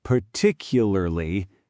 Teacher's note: the middle syllable compresses.